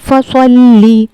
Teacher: صاد بھی حروف مستعلیہ کے 7 حروفوں میں سے ہے تو اس کو ہمیں پر کر کے پڑھنا ہے، موٹا کر کے پڑھنا ہے۔